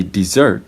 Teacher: the first syllable is short and the second syllable is long